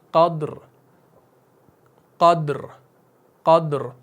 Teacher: क़द्र क़द्र क़द्र, तो रॉ को मोटा करना है।